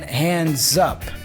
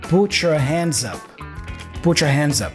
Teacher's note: has a z sound which joins with up so zap zup put your hands up put your hands up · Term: connected speech